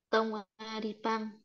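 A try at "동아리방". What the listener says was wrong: không đọc tông tùng tùng tùng cũng được thì tròn miệng nó ra tùng tùng a đi bang tùng a đi bang thì tùng a đi bang tròn miệng nhé tùng a đi bang tiếp là thi đấu thể thao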